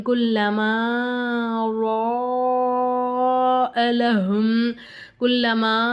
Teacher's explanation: நம்ம இந்த மூணு அலிஃப்க்கு நம்ம நீட்டி ஓதணும்